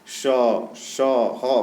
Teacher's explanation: संघर्षी यानी कि उष्म यानी कि इनको बोलने पर श माने कि अंदर जिहा पर गर्मी महसूस हो रही है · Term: संघर्षी व्यंजन